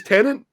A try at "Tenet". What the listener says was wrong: No, there's not an N in it, mate. It's Tenet.